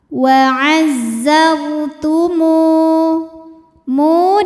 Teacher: wau sukun didahului baris damah maka huruf mim panjang dua harakat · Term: Mad Thobi'i